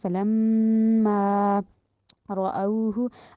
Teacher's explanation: میم پہ غنہ کرنا ہے، دوسرا الف کو لمبا کرنا ہے، یعنی میم کے اوپر ناک میں آواز لے کے جانی ہے، اور میم کے بعد الف کو پڑھنا بھی ہے الف مدہ بنا کے، جیسے فلما رأوہ۔